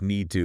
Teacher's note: reducing to just need to like the t almost disappears